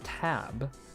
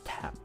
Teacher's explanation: on the p sound your vocal chords don't vibrate